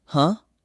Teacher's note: In all three places, separated by oceans and thousands of years of history, that stranger will make almost exactly the same tiny sound. A short, rising grunt.